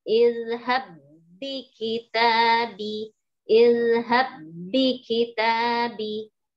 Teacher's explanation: kena huruf ba, ketemu ba, jadi kita ikutin yang keduanya. Yang keduanya ditasdidkan langsung.